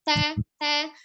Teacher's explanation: Ketika hamzah ditenggorokan bagian bawah, ba bertemunya 2 bibir di bagian dalam, ta ujung lidahnya ada di pangkal gigi seri atas